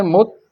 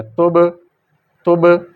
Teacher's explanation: جب 2 ہونٹ آپس میں ملے ہیں تو فوری ہٹ گئے ہیں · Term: قلقلہ